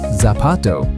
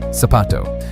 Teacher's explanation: It's how you pronounce the letter z. In Latin America, the word for shoe, zapato, sounds just like it starts with an s, sapato.